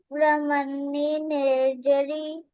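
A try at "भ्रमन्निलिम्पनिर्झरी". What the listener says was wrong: अरे ब्रह्मण्य के बाद लिंप नहीं वर्ड दिखा क्या आपको? ब्रह्मण्य लिंप निर्झरी।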